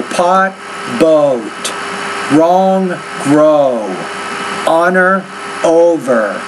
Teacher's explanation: it's the O sound you need to make a little bit longer if you want to get an American accent